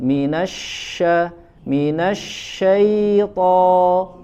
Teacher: Billa jangan sempurnakan buka mulutnya tetapi tanpa berlebihan kemudian Shin ya huruf Shin ya dia punya sifat yang namanya tafasy menyebar suara di dalam mulut